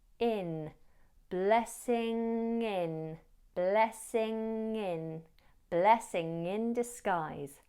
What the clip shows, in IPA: ˈblɛsɪŋ ɪn dɪsˈɡaɪz